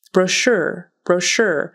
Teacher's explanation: That CH is going to be pronounced like an SH, so it's sh.